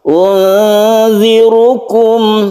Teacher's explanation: Ikhfa ini jumlah hurufnya ada 15, salah satunya adalah zal. Unzirukum, roknya kita baca tebal karena dia itu dhammah, disebut juga tafkhim. Tafkhim artinya tebal.